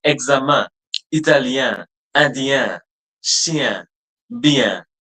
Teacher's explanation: You have to open your mouth, but the sound will also pass through your nose. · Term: nasal